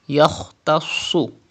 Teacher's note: kha and swad are mustaliya letters. You have to pronounce with thicker voice.